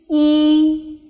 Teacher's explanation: The pronunciation of E is just like in the English word cheese, ease, E. While pronouncing E, the mouth opening is minimum, the lips remain flat, and the tongue is positioned high and leaning forward.